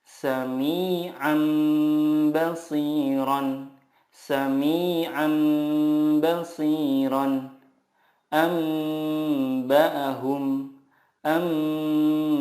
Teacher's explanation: Cara membacanya, mengganti nun sukun dengan mim sukun dan disertai gunnah 2-3 harokat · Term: iqlab